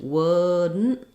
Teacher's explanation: The D is unreleased, wouldn't. So what I do is I basically go up to make the D and then I release right into the N.